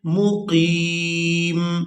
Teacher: وقف کی صورت میں میم کو ساکن کر دیں گے